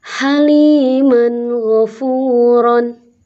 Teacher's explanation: Haliman ghafuron, ini ada fathah tanwin atau fathatain bertemu ghain, jelas terbunyi suara fathatain, yaitu berupa nun mati ya suaranya, dan tidak dengung. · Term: izhar halqi